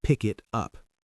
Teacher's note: Connect the K to the I and the T to the U. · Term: connected speech